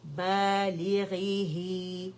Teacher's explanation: 2 counts کے لیے آواز نیچے جائے گی کیونکہ یا صغیرہ اس کی آواز کو اسٹریچ کر رہی ہے